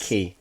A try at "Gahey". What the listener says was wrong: You said Gakey, like achy Gakey.